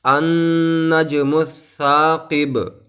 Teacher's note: با کو ساکن کر دیں گے اور با کے اوپر قلقلہ کریں گے